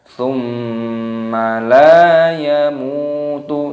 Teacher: mim sukun, wawu sukun, dan huruf sebelumnya berharakat dhammah, maka dipanjangkan mimnya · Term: mad tabi'i